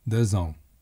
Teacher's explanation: Notice that the x has a z sound because the next word begins with a vowel.